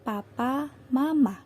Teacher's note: dilafalkan dengan bibir atas dan bawah terkatup rapat dan udara dari paru-paru tertahan untuk sementara waktu sebelum katupan itu dilepas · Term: konsonan hambatan bilabial